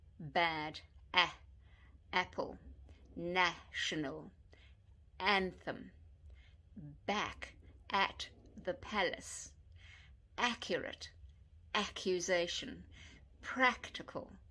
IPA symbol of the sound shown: æ